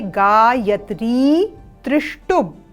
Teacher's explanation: एक त्र पर दीर्घ स्वर है ई का और दूसरे त्र पर ह्रस्व स्वर है ई का